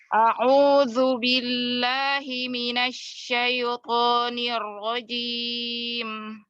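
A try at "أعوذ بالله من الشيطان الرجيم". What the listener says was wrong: Ya, disempurnakan lagi untuk huruf to. To-nya lebih diitbakkan lagi. Dan dua harokatnya disamakan ya.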